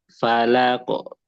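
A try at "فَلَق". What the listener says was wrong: falako. Jangan didorong, falako. Enggak, falako, falako.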